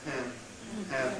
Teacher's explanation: The vowel is nasalized. Perhaps it's not a disaster if that happens in English before a nasal. French would tend to say and.